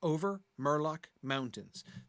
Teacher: 3 two-syllable words, all of which clearly have the stress on the first syllable. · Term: trochaic